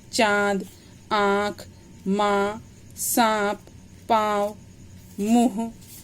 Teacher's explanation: जब स्वर नाक और मुंह से दोनों से बोला जाता है तो उसके ऊपर चंद्र बिंदु लगाया जाता है, और ऐसे स्वर नाक और मुंह दोनों से बोले जाने के कारण अनुनासिक कहलाते हैं